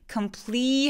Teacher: complete 할 때 굉장히 긴 E 소리를 내주시고